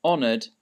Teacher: But in this case, honored, the H is silent. So you just uh imagine it's not there.